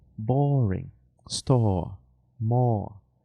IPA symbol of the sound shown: ɔː